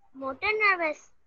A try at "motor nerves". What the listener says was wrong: Motor nerves. It's not nervous, it's nerves. Ji, motor nerves.